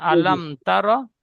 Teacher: আলাম বলে গুন্না করবেন না মিম সাকিনের পরে বা মিম ছাড়া অন্যতা এসেছে তাই মিমকে বিনা